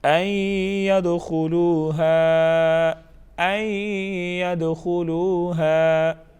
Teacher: ان ید نون کا اخفا ہوگا، دال پر قلقلہ کریں گے